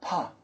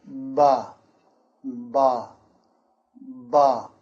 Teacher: the ba is not really pushing so much air from your mouth. A little air, but not as much.